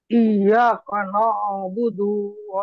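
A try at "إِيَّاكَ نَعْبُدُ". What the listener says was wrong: হয় নাই, আপনি বলতেছেন এরকম, ইয়াকা না আবুদু, আবুদু না, এটা হলো না বুদু, বুদু,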